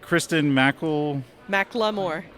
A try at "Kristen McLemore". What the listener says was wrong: Oh, it's almost like you're saying Kristen and Lamore, like Lamore.